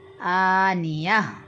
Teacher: اس گول تا پر اگر وقف کریں گے تو اس گول تا کو ہا سے بدل دیں گے